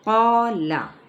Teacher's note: قا پر پڑھا جائے گا الف مدہ کے ساتھ، لام کی حرکت کو نہیں کھینچیں گے